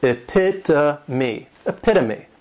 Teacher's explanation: the third syllable has that schwa, and the last syllable is that long E